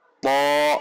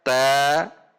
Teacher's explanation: huruf to ini pangkal lidahnya naik, sementara ta pangkal lidahnya turun. Bagaimana cara menaikkan pangkal lidah supaya huruf to tidak sama dengan ta, yaitu dengan cara menegangkannya.